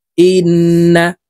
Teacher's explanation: জের ইন ওয়াজিব গুন্না হরকতের বামে নুনের উপরে তাসদিদ আছে তো আমরা এই হামজা তাশদি নুনের সাথে গুন্নার সহিত পড়বো নাকের বাঁশি থেকে গুন্না করতে হবে